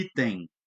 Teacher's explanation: O nariz tremeu, ele é nasal. Diferente de quando eu falo herói, aberto, oral, sai só o som inteiramente pela boca.